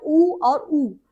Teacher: ऊ और ऊ के उच्चारण में ओष्ठ की आकृति वृत्ताकार हो जाती है।